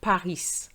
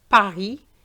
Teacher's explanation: paris is pari the s is silent